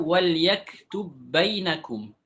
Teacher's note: ba huruf sukun ketemu dengan ba yang berharakat apa yang kita lakukan kita masukkan ba ke ba yang berharakat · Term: idgham